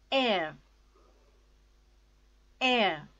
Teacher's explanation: R sound is not there and it is pronounced as air.